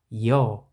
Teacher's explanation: 여 이로 시작해서 어로 끝나죠. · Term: 이중모음